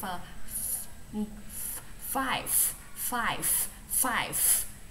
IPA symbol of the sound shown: f